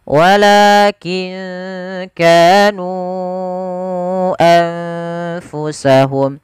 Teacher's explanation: Dipanjangkan 4 harokat atau 5 harokat. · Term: mad jaiz munfasil